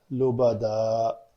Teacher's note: اگر وہاں پہ وقف کرنا ہے تو 2 زبر والی تنوین کے اوپر وقف کرنے کا قاعدہ ہے کہ اس کو الف مدہ بنا کر پڑھا جاتا ہے۔ تو 2 تنوینیں ہیں تو تنوین میں 2 زبر ہیں تو سمجھے آپ نے 1 زبر کینسل کر دی تو یہ لفظ رہ جائے گا لبدا۔